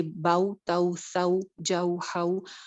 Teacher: جیسے پاؤ بولتے ہیں ویسے باؤ، تاؤ، ساؤ، جاؤ، ہاؤ، اس کو لمبا نہیں کرتے. یہ جو حروف لین ہوتے ہیں، یا لین بھی اور واؤ لین بھی، ان کو لمبا کر کے نہیں پڑھتے